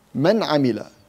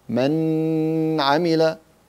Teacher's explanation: You just let the نون exit from its articulation point without غنة. · العين is one of the إظهار letters. We make the نون مظهرة without increasing the غنة in the نون.